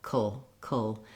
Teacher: I go right from the K to the L, kul. That's a syllabic L. That's where the L is its own syllable, serves as a consonant and a vowel. So you do want kind of a dark schwa sound as you're moving into the L. · this letter A basically has no sound. I go right from the K to the L, kul. That's a syllabic L.